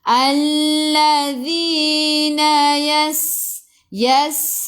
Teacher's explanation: Sin ada sukun kena bunyikan. Sifat huruf sin sofir, berdesir, bunyi belalang.